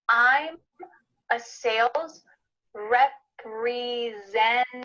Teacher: You might notice that the T, the first T in this word, I'm cutting out.